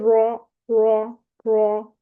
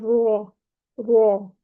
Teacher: زبان کے پچھلے حصے کو ہم نے اوپر اٹھانا ہے، تو را را را موٹا ہو جائے گا۔